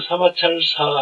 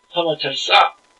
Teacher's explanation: 뒤에 오는 첫 소리가 된소리로 납니다